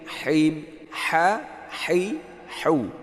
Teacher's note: Pakai ha di tenggorokan yang tengah keluarnya.